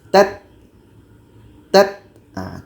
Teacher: setelah suara tertahan baru nanti ada anginnya hamasnya